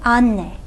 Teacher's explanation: e is a front unrounded vowel that means for four-way vowel harmony that it's going to take